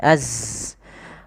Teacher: Zai itu termasuk sifat jahar, yaitu nafas tertahan, tertahan tapi mengalir suaranya